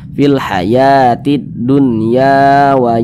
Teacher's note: maka dibaca panjang ini huruf alif di belakangnya ada huruf ya huruf ya memiliki tanda baca fathah sehingganya dibaca panjang Mad Thobi'i panjangnya dua harakat